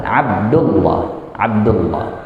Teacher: Tapi kalau dibaca ya Abdullah, nah, tebal, lamnya tebal.